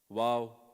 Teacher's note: Both lips but they don't touch